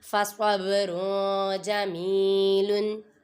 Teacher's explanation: با پہ قلقلہ ہو رہا ہے کیونکہ یہ حروف قلقلہ میں سے ہے · ہوتا ہے، ویسے نہیں قلقلہ ہوتا، را کے اوپر تنوین ہے، تنوین کے بعد حروف اخفا میں سے جیم آ رہا ہے ادھر گنہ کریں گے